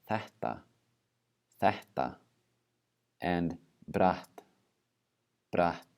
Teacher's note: All right, when you have the double T, just like we saw with double Ks and double Ps, we're going to have pre-aspiration. So instead of doubling the sound of the consonant, we're going to have that breathing out that comes before it.